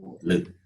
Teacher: Since the tongue is in contact with the teeth, therefore this letter is called dental.